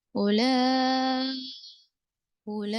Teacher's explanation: तो यहाँ पर उर्फ मद्दा के बाद हमजा उसी कलमे में है तो मद्दे मुत्तिल है. उला उला खींचेंगे 5 हरकतों के बराबर